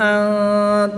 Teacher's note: نون ساکن میں اخفاء کا قاعدہ ہوگا یعنی کہ غنہ کر کے پڑھیں گے